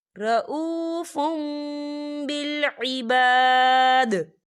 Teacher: यहाँ देखिए रऊफ़ुम, फ़ा के पर तनवीन है और तनवीन के बाद बा आ रहा है तो यहाँ पर इकलाब होगा यानी तब्दीली होगी। हम तनवीन को मीम के साथ मिलाकर पढ़ेंगे और यहाँ पर गुन्ना भी होगा।